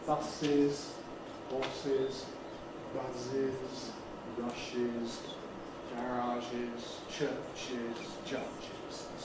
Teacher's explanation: after sibilants, we have to add a vowel before the z. So we get horses as an extra syllable.